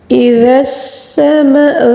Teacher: اذا السماء، ذال کو باریک بالکل نرمی سے پڑھا جائے گا، اور سین کو جو ہے سین کی سیٹی اور مد متصل کو 5 الف کے برابر کھینچ کر پڑھیں گے